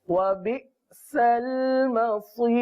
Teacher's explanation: मसीर की रा को पुर नहीं पढ़ेंगे, मसीर की रा को बारीक पढ़ेंगे, क्योंकि रा साकिन से पहले जब याए साकिना हो या साकिन, या पर जज़म हो तो उसको या साकिन कहते हैं, या साकिना। · तो इसको बारीक पढ़ेंगे, मसीर आखिर में आवाज को बारीक रखना है